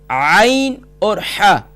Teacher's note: عین اور حا یہ مڈل آف تھروٹ یعنی وسط حلق سے ادا ہوتے ہیں، درمیانے حلق سے ادا ہوتے ہیں۔